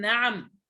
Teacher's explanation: لا تدغم هذه اللام في النون وإنما أظهرها